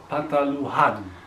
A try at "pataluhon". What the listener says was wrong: Pataluhon. Itu O, saya.